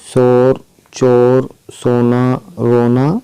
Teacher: वाव मजहूल की देखते हैं हम। वाव मजहूल इसकी आवाज़ कम खींचकर निकलती है